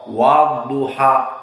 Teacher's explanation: Maka makhraj dha yang benar dia adalah hafatay lisan.